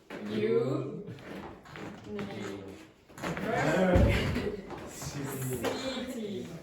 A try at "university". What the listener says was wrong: Very good, university. Except, I would say that, no, really, for the second last syllable, she went CT, but city, university. So not strong at all.